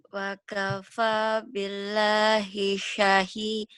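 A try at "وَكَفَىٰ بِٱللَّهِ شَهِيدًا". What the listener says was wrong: Bukan. Wa kafa billahi bukan. Kan la-nya panjang. Wa kafa billahi syahida. Lihat panjang pendeknya. Wa kafa. Tekan di mad. Wa kafa billahi. Bukan wakafa billahi. Wakafa billahi.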